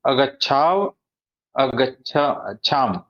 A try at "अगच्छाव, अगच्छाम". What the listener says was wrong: हा जो शेवटचा व आणि म आहे ना, त्याचा उच्चार पूर्ण करायचा, कारण की तो हलंत नाही.